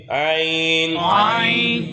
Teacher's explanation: گلے کے درمیان سے پڑھیں گے